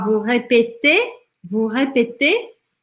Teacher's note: Aqui, esse EZ, o Z não vai ter som, mas ele me obriga a pronunciar este E mais aberto